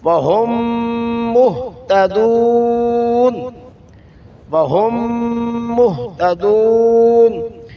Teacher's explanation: آگے میم کا میم میں ادغام ہوا، میم مشدد ہو تو غنہ ضروری ہے، نون مشدد اور میم مشدد میں غنہ ضروری ہے، یہاں میم مشدد ہے، وہم مہتدون، وہم مہتدون۔